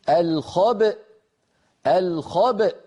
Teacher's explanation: هنا نخرج الباء المقلقلة بالتباعد بين طرفي عضو النطق بين الشفتين يعني، ونجعل الوترين الصوتيين في الحنجرة ينضمان ويصطدما حتى تخرج الهمزة الساكنة التي هي في الوصل همزة مفتوحة.